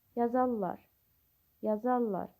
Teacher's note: Tələffüzü yazarlar. R samiti L samitinə çevrilir.